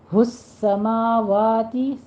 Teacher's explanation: سین پر تشدید ادا کیجیے، سختی کر کے پڑھنا ہے، تھوڑا سا سیٹی کی آواز بھی آنی چاہیے، اور ما وا دونوں فتحہ قائمہ ہے، 2 کاؤنٹ کرنے ہیں۔